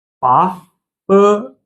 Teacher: So the second one, the second tone is it goes upward, right? We also call it rising tone.